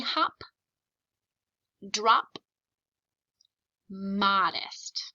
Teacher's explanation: Notice the O in all three of those words say ah. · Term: short O